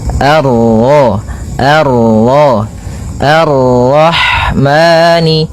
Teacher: Kemudian ini bertemu dengan huruf ro yang berharakat tasydid. Maka rnya kita baca dengan tafkhim